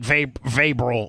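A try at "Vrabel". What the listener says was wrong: The R is silent.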